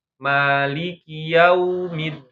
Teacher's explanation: ketika wau sukun jangan Jadi o